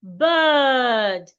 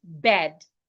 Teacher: when you have I and R in the middle of words as well, you want to ensure that you make a long bird and not bed.